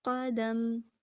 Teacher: میم کی تنوین جو تھی دو پیش کی وہ گر گئی، میم ساکن، قدم کریں گے، ٹھیک ہے۔